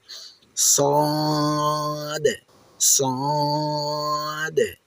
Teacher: এটি উচ্চারণের সময় মুখটা গোল হয়ে যাবে এবং আওয়াজটা অনেক ভারী বা মোটা হবে।